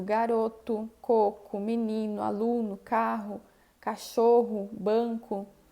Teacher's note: A letra O vai ser pronunciada como um U no final das palavras